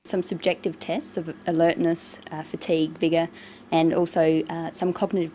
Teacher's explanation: she uses rising and falling tones and a tone that's neither rising nor falling just a flat tone